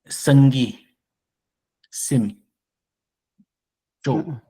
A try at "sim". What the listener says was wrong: Tu as mis le ton bas. Dis seulement sim.